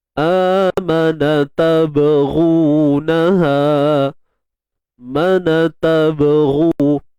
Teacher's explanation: Huruf ghain baris depan tebal, dan muncung lah sebab dia baris depan.